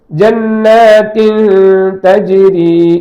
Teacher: நூனுடைய குன்னா சப்தம் இருக்க வேண்டும். நூனுக்கு குன்னா சப்தம் இருக்கு, மூக்கந்தண்டு ஓசை என்பது இருந்து கொண்டே இருக்கும்